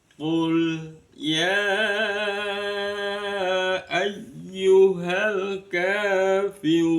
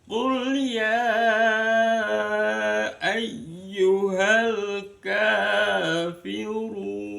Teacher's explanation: Nada yang pertama datar, nada yang kedua naik. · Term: nada datar